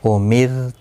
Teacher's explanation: دیکھو را ساکن سے پہلے زیر ہے، وہاں پر پڑھا تھا ہم نے جب زبر یا پیش ہو تو پر پڑھا جائے گا، یہاں پر زیر ہے اس لیے باریک پڑھا جائے گا · دیکھو را ساکن سے پہلے زیر ہے، باریک پڑھا جائے گا